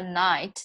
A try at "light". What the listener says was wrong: A light. Light. La la la la la la light. So that's how you need to practice that until it just comes perfectly. So I'm not going to torture anymore with those L-I sounds today, but don't forget, that's the only thing that you're having difficulty with right now.